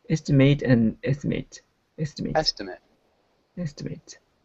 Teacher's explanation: The first syllable is stressed in both of them.